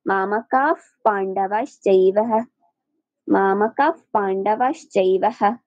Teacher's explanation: অর্ধ হ, সাপেরা যেভাবে ফুঁস করে, একটু খেয়াল করবেন, হ সম্পূর্ণ নয়